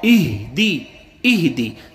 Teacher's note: سب سے جو نیچے والا حصہ ہے وہاں سے ہا ادا ہوتا ہے